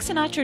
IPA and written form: sɪˈnɑːtrə (Sinatra)